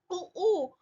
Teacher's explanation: ओठ जो लिप्स हैं आपके, लिप्स के आसपास से आ रही है, तो ओठ ऊ ओष्ठे से आ रही है।